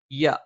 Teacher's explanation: യ നാവിന്റെ മധ്യഭാഗം മേലെ അണ്ണാക്കിൽ